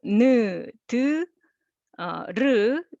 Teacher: ㄴ ㄷ ㄹ Those are all tongue tip sound